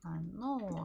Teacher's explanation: Stress on the second O.